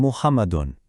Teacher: You hear that un sound at the end? That's tenween.